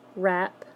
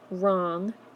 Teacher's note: where the first sound you hear is the R sound instead of the W sound